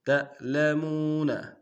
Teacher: تا کو حمزہ سے ملائیں گے، جھٹکا دیں گے